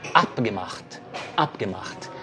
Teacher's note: Quando você estiver pronunciando, por exemplo, abgemacht, lembra que a ênfase é no começo, tá? É no A.